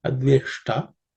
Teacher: In the word adveshta, the ush is a cerebral sh, so tip of the tongue should ideally point to the top of roof of the mouth. Ushta, because the ta also is actually the tongue will be in the same spot.